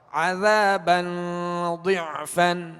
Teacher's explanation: ذال کو نرمی کے ساتھ، اس میں سیٹی کی آواز نہیں آئے گی، یعنی عذابا نہیں پڑھیں گے ورنہ ذال زا میں تبدیل ہو جائے گی، بدل جائے گی.